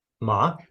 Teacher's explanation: Ma, ma, ma, ma, a high tone, ma, a low tone, and ma, a low tone that's rising as you say it